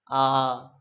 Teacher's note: নিম্ন আর বিবৃত কেন্দ্রীয় মানে জীবটা কেন্দ্রে অবস্থান করছে একেবারে মাঝখানে নিম্ন মানে জীব সবচাইতে নিচে অবস্থান করছে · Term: কেন্দ্রীয় নিম্ন